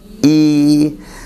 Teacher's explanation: اگر ہم زیر کو کھینچتے ہیں تو وہ یا کی آواز پیدا کرے گا. حمزہ زیر ای، حمزہ یا زیر ای.